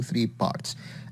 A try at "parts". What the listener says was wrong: Again, so 3 parts. You need to pronounce that P with a little bit more air.